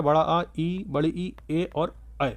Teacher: बाकी जितने भी स्वर बचे हैं इनके अलावा इनके अलावा बाकी जितने भी स्वर बचे हैं वो आ वृत्ताकार हो जाएंगे। क्योंकि उनके उच्चारण में होठ जो है वृत्ताकार नहीं बनते हैं बल्कि फैल जाते हैं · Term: आवृत्ताकार स्वर